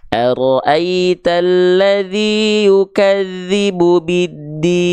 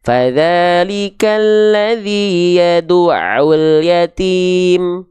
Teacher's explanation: Maka pastikan mad arid li sukun itu dibacanya sama. Misalnya di ayat pertama, teman-teman pengen mad arid li sukunnya dibaca 6 harokat